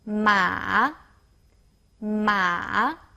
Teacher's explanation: the third tone is falling rising tone you can use your head to help you to pronounce it